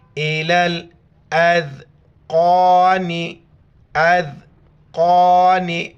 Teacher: بیچ میں یا اور الف کو نہیں پڑھیں گے